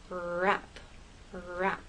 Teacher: With R and rap, the tip of your tongue goes up towards that bump, but it doesn't touch. The rest of your tongue is sort of bunched up and tight and raised towards the roof of your mouth.